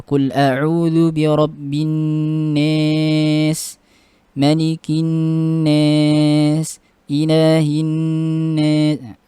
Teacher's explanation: Pertama Ad-Duri ini membaca lafaz an-nas ya, yang kasroh dengan imalah, yaitu yang majrur dengan kasroh dengan imalah. Jadi setiap lafaz an-nas dibaca imalah, an-nas begitu.